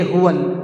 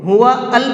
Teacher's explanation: ہوول، واو کو لام میں ملا کر کے پڑھیں گے